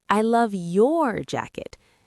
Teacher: Now your is stressed. You are saying not someone else's jacket, but your jacket specifically. The stress changes the meaning. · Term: word stress